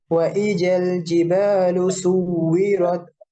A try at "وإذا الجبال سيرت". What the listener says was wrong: ওয়াও নাই, ওয়াও থাকলে সু হইতো।